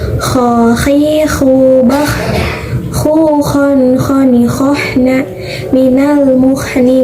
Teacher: huruf kho yang keluar dari tenggorokan atas atau ujung tenggorokan